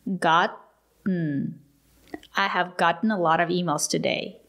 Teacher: present perfect have gotten the letter T is a stop T